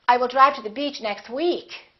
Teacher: drive to the beach next week not this week and finally if you really want to emphasize that you're saying week you can put a little more extra stress on the word week